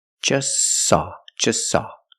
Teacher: we see the t is between consonants so don't pronounce it it's silent just saw you link the S with the S link them together just saw just saw they just saw a